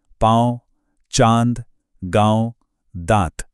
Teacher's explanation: आवाज, नाक और मुंह दोनों से एक साथ आ रही है। यह अनुस्वार की तरह सिर्फ नाक में बंद नहीं है। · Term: अनुनासिक